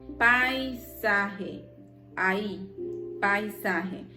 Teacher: vocal abierta más una cerrada diptongo decreciente